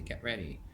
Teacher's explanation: So the T is gone.